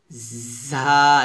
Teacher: জিহ্বার আগা নিচের দাঁতের গোড়ার সঙ্গে লাগাবেন, বা নিচের দাঁতের আগার সঙ্গে বা মাঝখানে যাই বলেন আপনাকে নিচের দাঁতের সাথে লাগাতে হবে এবং একটু শক্ত করে উচ্চারণ করতে হবে, ঝা এভাবে ঝা।